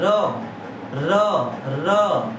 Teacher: तो र जब बोल रही है तो हमारा जीभ का कौन सा हिस्सा टच हुआ है, ऊपर वाला हिस्सा टच होता है, उसे मूर्धा बोलते हैं